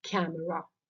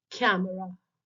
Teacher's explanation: It has three syllables which are camera, of which the first syllable is stressed while the other two syllables are unstressed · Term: dactyl